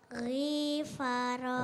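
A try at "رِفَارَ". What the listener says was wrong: R-nya pendek. Kalau pendek berarti langsung. Rifaro.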